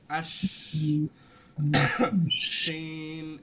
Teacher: আর এই যে আমি শিন উচ্চারণ করছি, এটা কিন্তু শীষ না, এটা হচ্ছে ফিস ফিসানি। শিনে শুধু বাতাসের ফিস ফিসানি হবে, কি হবে না, শীষ হবে না, শুধু ফিস ফিসানি প্রকাশ পাবে। আশ, এই যে বাতাসের ফিস ফিসানি ভিতরে ঘুরপাক খাবে, বুঝতে পারছেন। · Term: তাফাস্সি